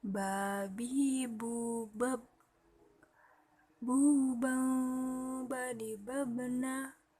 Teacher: Melafalkan huruf ba dengan cara merapatkan kedua bibir.